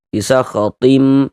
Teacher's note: Kemudian di bagian tim, di bagian situnya tuh kita tahan sejenak suara kita. Kita gunnahkan, kita panjangkan kira-kira sepanjang 2 harokat. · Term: idgham bi gunnah